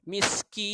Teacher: Yang terakhir ini saya dah cakap warna biru merupakan mad arid lis sukun. Jadi dia bukan 2 harakat sebab kerana kita wakafkan. Maka bacaan dia menjadi lebih 2 harakat, iaitu 6.